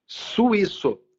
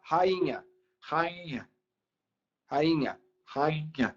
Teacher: É que o NH, ele torna o som nasal.